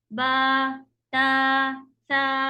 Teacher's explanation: با کے ساتھ ایک الف مد، تا کے ساتھ ایک الف مد اتنا بڑا بڑا سے کھینچ کے چلنا ہوتا ہے